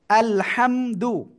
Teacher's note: হা মিম জবর হাম গলাটা চেপে পড়তে হবে